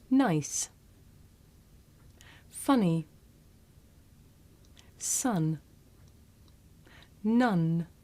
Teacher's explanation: make this sound with the tongue behind the teeth um and when you make this sound you should be able to feel a vibration in your nose